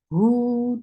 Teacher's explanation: For dhamma, circle your lips. Hu, 2 counts long, and make sure you circle your lips for dhamma here too